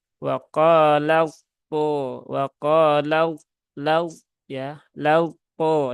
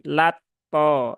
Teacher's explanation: taknya dihilangkan dia melebur sempurna langsung masuk ke to berarti harus segera menaikkan pangkal lidah dan melengketkan tengah lidah ke langit-langit atas. Sebab huruf po itu dia punya isti'la dan juga punya sifat itbaq ya. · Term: idgham mutajanisain sogir kamil